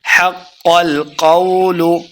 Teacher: لقد حق القول حق کو قاف کے سامنے لیں گے، قاف مشدد ہے، اس کو موٹا پڑھنا ہے۔ حق القول قاف کو موٹا پڑھیں گے، لمبا بالکل نہیں کرنا